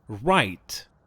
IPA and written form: raɪt (write)